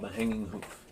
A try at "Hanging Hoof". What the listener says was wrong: I think you said boof. B-O-O-F. Boof.